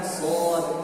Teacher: Karena Shad punya sifat Itlaq dan sifat isti'la yang membuat hurufnya menjadi tebal.